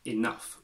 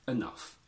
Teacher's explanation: Sometimes the difference between I and U is linked to accent. In British English, we tend to pronounce this as enough with I, and in American, they tend to say enough with a schwa.